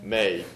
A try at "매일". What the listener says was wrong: 저 끝이 어디가 있죠? 인 발음 위치에 가 있어야죠. 지금 이 밖으로 나왔습니다. 틀렸습니다. 매일.